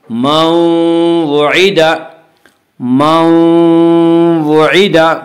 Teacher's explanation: نون ساکن کو واو سے ملا کر غنہ کے ساتھ پڑھیں گے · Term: ادغام ناقص